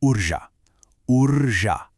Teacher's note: You really want to make sure the rolled R and that sharp J sound are completely distinct.